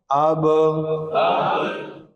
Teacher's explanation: با کا مخرج کیا ہے؟ دونوں ہونٹوں کو ملانا۔ · جب پڑھتے ہوئے آواز بند ہوئی یہ صفت شدت ہے، بند ہونے کے بعد جو آواز ہلی وہ صفت قلقلہ ہے